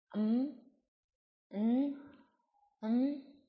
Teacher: because airflow is blocked in the mouth for this, they are sometimes called nasal stops